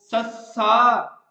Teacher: ਸਾਹ ਦੀ ਹਵਾ, ਜਿਹੜੇ ਉਚਾਰਨ ਅੰਗ ਹੁੰਦੇ ਆ, ਉਹ ਨਾਲ ਖਹਿ ਕੇ ਬਾਹਰ ਨਿਕਲੂਗੀ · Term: ਖੈਵੇਂ ਵਿਅੰਜਨ